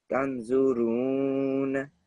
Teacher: So the ra should be a bit longer than what you did just now.